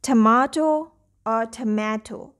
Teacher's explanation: the first syllable has the schwa sound in this word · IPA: ə